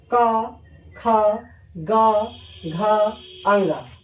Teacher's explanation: आपसे पूछे कि क वर्ग किस चीज से बोला जाता है, तो आप बताएंगे कंठ से